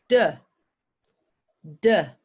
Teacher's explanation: happening in my throat unvoiced have a go it d d same as T but it's voiced my throat I'm using my throat